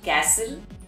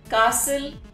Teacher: we do not pronounce the letter t in this particular word